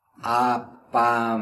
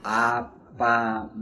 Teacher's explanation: Otra manifestación sería el hecho de que la bilabial wa del quechua centro-sureño, por ejemplo, en Apamuhuay, se dice en el sur y el centro, por Ayacucho, aquí es Apamume. O sea, en me se dan dos fenómenos, la desaparición de ay y a su vez el reemplazo de ua por ma, por otra labial nasal